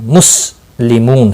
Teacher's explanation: صفیریہ کا سین آیا ہے، اس کو موٹا نہیں پڑھنا ہے، مسلمون سٹی کی آواز نکلنی چاہیے۔